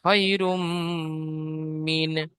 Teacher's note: তাই তানবিনকে মিমের সাথে মিলিয়ে একাধিক পরিমাণ গুণাহ করে পড়তে হবে